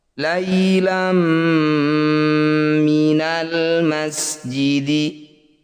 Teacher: Fathah tanwin bertemu mim disebut bacaan idgham bi gunnah. Bunyi fathah tanwin masukkan pada mim kemudian dengungkan 2 harokat